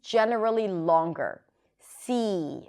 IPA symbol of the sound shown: i